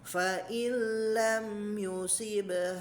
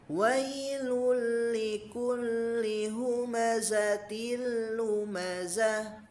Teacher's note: memasukkan nun sakin atau tanwin ke huruf berikutnya tanpa disertai dengan gunnah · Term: idgham kamil